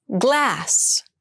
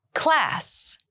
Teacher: Glass has the voiced g sound and class has the unvoiced k sound.